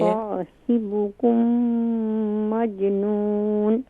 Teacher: جی صاد کو مزید فل ماؤتھ کیجئے